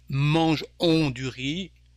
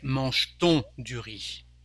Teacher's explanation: Rather than saying mange-on du riz, we say mange-t-on du riz with a little T.